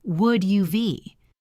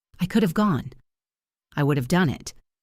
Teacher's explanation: Grammatically, we write have, but when we speak, we contract would have to would've, which sounds like would uv.